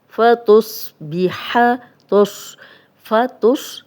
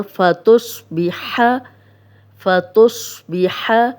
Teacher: स्वाद मोटा है तो ये मोटा ही पढ़ा जाएगा।